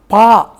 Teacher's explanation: நான் பா என்கிற போது மேல் உதடும் கீழ் உதடும் சேர்ந்து அந்த ஒலியை உண்டாக்குகிறது